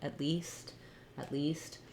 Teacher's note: Remember that it's that tense E sound, at least, at least. And you see how it's stressed on the word least. At is just a helping word here.